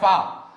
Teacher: ऊपरी दांत एवं निचले होंठ का मिलना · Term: दंतोष्ठ